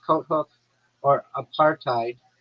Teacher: In American English, the H sound disappears in practice when preceded by a consonant such as T.